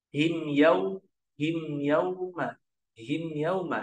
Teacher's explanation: Nah, itu ada izhar syafawi atau jelas di bibir.